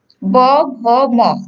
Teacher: ঠিক একইভাবে প বর্গের ঘোষ বর্গ হচ্ছে ব, ভ, ম। দেখো এগুলো যখন উচ্চারণ করি তখন স্বরতন্ত্রটা একটু কাঁপে, সেজন্য এগুলো হচ্ছে ঘোষ বর্ণ।